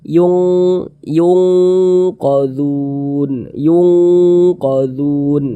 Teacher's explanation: cara membacanya dibaca samar dan berdenggung bunyi nunnya nih bunyi Nun ini kita baca samar kalau ab'ad dia lebih condong berbunyi Eng jadi kita baca Yung yungqodzun yungqodzun seperti itu kemudian Dun dibaca